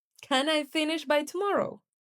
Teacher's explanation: Repeating their question with a rise and fall. You're not really asking, you're expressing disbelief through your tone.